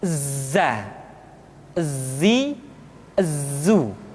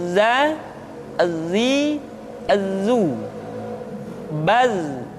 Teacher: ketika kita mengucapkan huruf za, suara kita mengalir, akan tetapi nafas tidak boleh mengalir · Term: al-jahr